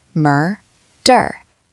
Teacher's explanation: Both syllables have that R color. If you can say murder without a British or Spanish or French accent creeping in, you're winning. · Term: American R